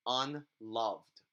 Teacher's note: See how I stressed love, and then un is the unstressed syllable.